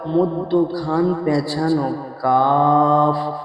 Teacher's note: জিভের গোড়া হইতে একটু আগে বাড়িয়ে তার বরাবর উপরের তালুর সাথে লাগিয়ে উচ্চারিত হয় মধ্যখান পেঁচানো কাফ।